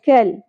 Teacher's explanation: کاف باریکی سے ادا کرتے ہوئے لام کے ساتھ جوڑنا ہے، قلقلہ نہیں کرنا